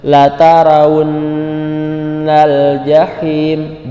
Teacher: ini huruf nun tasdid, ini huruf gunnah, maka didengungkan suaranya